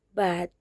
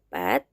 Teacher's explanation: bedanya ada pada konsonan awal, yaitu B-nya bergetar dan P-nya tidak bergetar